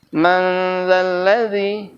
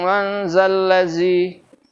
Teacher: di ujung lidah tuh nyantel aja, enggak ada suara desis sama sekali. Enggak ada kola angin sama sekali.